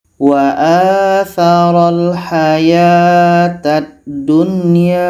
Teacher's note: Hamzah bertemu alif, mad badal, 2 harkat.